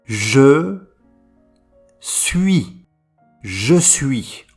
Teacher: On ne prononce pas le S final.